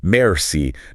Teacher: try to make that R sound in merci quite soft, almost in the back of your throat, sort of like you're humming it.